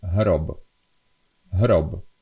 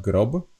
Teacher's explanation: So even the English keeps the original G sound, but in the Slovak, the G kind of got softened to H